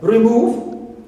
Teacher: The second syllables, like in the words like relax as a verb, second is stressed.